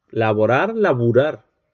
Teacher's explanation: Allí vemos también vacilación de vocales átonas.